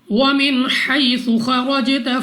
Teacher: Next ہمارے پاس یا ساکن سے پہلے زبر یا لین، بغیر کھینچے بغیر جھٹکا دیے پڑھیں گے، یعنی جلدی سے۔ خوا مستعلی میں سے ہے، موٹا پڑھیں گے، منہ اور آواز کو کھول کر۔ را پر زبر، را کو پر یعنی موٹا پڑھیں گے۔ · جیم ہمارے پاس قلقلہ میں سے ہے، یعنی جب ہم جیم کو ادا کریں گے تو ہمیں اپنی آواز واپس سنائی دے گی،